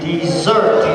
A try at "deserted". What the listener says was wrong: Dessert? No, E-D. Deserted. Deserted.